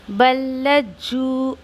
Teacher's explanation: फिर यहाँ पर अक्सर गलती जो होती है पढ़ने में, देखिए कि लाम भी मुशद्दा है और जीम भी मुशद्दा है ना। जीम मुशद्दा, लाम मुशद्दा, दोनों की 2-2 दफ़ा आवाज़ आनी चाहिए। जैसे कैसे, बल्लजू, और इसको 2 काउंट देंगे जीम को वाव मद्दिया की वजह से।